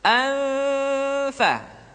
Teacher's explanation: ketika nun mati tanwin bertemu dengan huruf Fa maka posisi makhraj sudah berada pada huruf Fa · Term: Ikfa